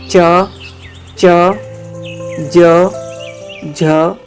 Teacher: ऐसे व्यंजन जिनको उच्चारण करते वक्त स्पर्श का समय ज्यादा होता है और उच्चारण के बाद वाला भाग संघर्षी हो जाता है वे स्पर्श संघर्षी व्यंजन कहलाते हैं च च ज झ स्पर्श